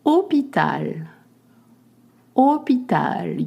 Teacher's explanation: You don't pronounce the H and you just make the sound O.